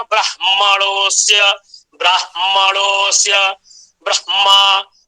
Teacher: इस तरह से कारिका है, जिसका भाव यह है कि यदि हकार पंचम वर्णों से संयुक्त हो गया, जैसे ब्रह्मा, तो ब्रह्मा में ह म से संयुक्त है, तो जब ह म से संयुक्त हो गया तो यहाँ जो ह है, इस ह का उच्चारण स्थान कंठ नहीं है, अपितु तो इसका उच्चारण स्थान हृदय है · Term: औरस्य हकार